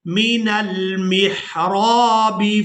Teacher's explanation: रा को अलिफ मद्दा की वजह से खींच कर अदा करेंगे।